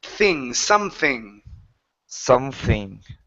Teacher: instead of something with an F it's a th with your tongue